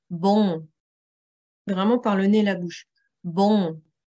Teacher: On ne prononce pas le N ou le M final. Et la dernière voyelle est nasalisée également en français.